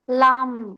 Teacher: 8 number মাখরাজটা হচ্ছে জিহ্বার আগা সরু ভাগ সামনের উপরে দাঁতের গোড়ার সাথে লাগিয়ে লাম